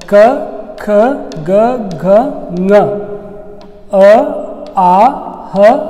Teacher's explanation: ಕಂಠ್ಯ ಅಕ್ಷರಗಳು ಅಂದರೆ ಕಂಠದಲ್ಲಿ ಹುಟ್ಟುವಂಥ ಅಕ್ಷರಗಳು ಯಾವುವು ಅಂದ್ರೆ ಕ ಖ ಗ ಘ ङ, ಅ ಆ ಹ ಮತ್ತು ವಿಸರ್ಗ.